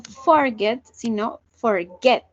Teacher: La acentuación está en el get.